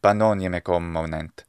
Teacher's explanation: there's a distinct reduction of the final vowel length here in the word banoniae into something like banoniae, or simply banoniae.